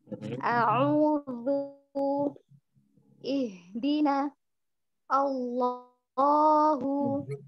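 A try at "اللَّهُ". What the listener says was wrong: Ternyata masih salah di nama Allah ya. Jadi kita karena mungkin keseringan ngomong Allah, Allah. Padahal sebenarnya kita harus menjelaskan hamzahnya dengan tipis, minimal sekali dalam bacaan Quran.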